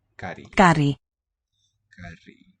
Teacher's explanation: And a dental trill for the R.